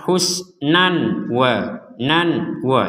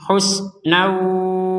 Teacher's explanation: dengan huruf wau Ini sama juga tadi bertemu dengan huruf wau maka dimasukkan sekaligus dengan dengung dengungan masuk artinya jangan sampai jelas